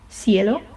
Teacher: Some people, especially in Spain, pronounce it more like an S like sound.